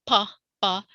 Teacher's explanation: the air is popping out from between your lips. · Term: plosive